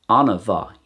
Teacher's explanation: you'll notice that there's a little extra vowel in there